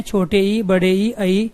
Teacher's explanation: इनमें जीभ के आगे वाले चोंच वाले हिस्से का हम प्रयोग करते हैं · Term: अग्र स्वर